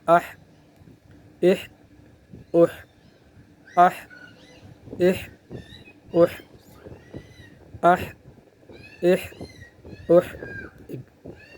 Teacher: گلے کے درمیان سے ہوا کی سی آواز آئے گی